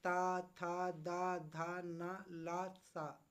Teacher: ये जीभ जो हमारी कहाँ लग रही है, दंत पर जाकर के लग रही है। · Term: दंतव्य व्यंजन